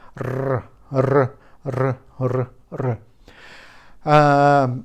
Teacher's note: some people still are using their r, which is produced with the tip of the tongue. It's trembling on the air.